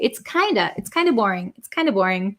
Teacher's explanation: So very similarly with have, kind of, that V sound. We kind of just get rid of that, and then we're left with the vowel sound. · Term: kinda